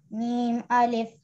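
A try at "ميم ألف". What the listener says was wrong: जी लंबा कीजिए, मीम अलिफ।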